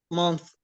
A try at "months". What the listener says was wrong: You make it dental. Okay, like to put your tongue between your teeth. If it's singular, if it's singular, but because it's plural, you say it months. يعني seen.